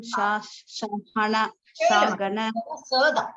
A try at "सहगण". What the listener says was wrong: இதெல்லாம் சதான். ஷங்கிறது இந்த மாதிரி இதுதான் ஷ. இது சாதம். सहगण रघुनाथान्वितं